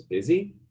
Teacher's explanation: with a high rising intonation that strongly projects a next speaker